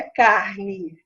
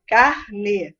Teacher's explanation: o E não tem som de I quando vem no final das palavras. Tem som de E mesmo.